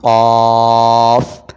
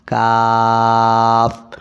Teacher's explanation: زبان کی جڑ نرم حصے سے اور کاف پر زبان کی جڑ سخت حصے سے لگ رہی ہے